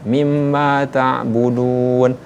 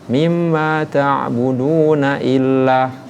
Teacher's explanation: Tetapi tadi kita mewasolkan mimma ta'buduna illa. Budunya ini berubah jadi mad tabi'i waw dan hilanglah hukum tajwidnya yaitu mad arid disukun.